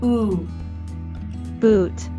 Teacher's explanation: The double O in boot is a long oo sound.